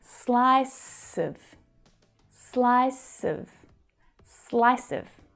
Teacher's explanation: you blend the s from the end of slice and connect it to the schwa sound at the start of of which is pronounced of of and so it's smooth and connected